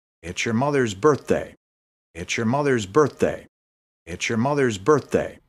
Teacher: here two different th's the th in mother's is V voiced the th in birthday is f unvoiced